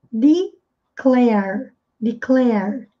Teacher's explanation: R retroflexo, enrolando a língua, e aqui sem pronunciar a letra E no final.